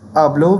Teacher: that will be pronounced as hablo with the stress clearly placed on the penultimate or the next to last syllable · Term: penultimate syllable